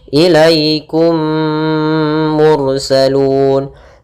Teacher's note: Kemudian kum mursalun, ada mim mati bertemu mim, kita namakan dengan idgham mimi. Maka caranya adalah memasukkan mim pertama kepada kedua sambil ditahan gunnahnya. Ilaikum mursalun.